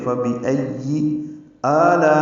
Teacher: لا میں الف مدہ کے بعد حمزہ آنے کی وجہ سے مد متصل ہے، ہم اس کو 4 حرکات سے زیادہ لمبا کرتے ہیں